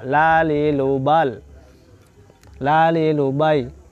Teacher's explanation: Inhiraf, lenturan ujung lidah condong ke punggung lidah. La, lenturannya condong ke punggung lidah.